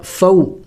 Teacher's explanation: حروف لین ہے, جلد پڑھیں گے, لمبا نہیں